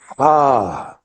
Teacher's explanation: اب ہا زبان سے یہ حلق کے اوپر سے نہیں نکل رہا، یہ سینے سے جہاں دل ہے، حلق کا جو آخری نچلا کنارہ ہے دور، وہاں سے یہ حرف نکلتا ہے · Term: اقصى الحلق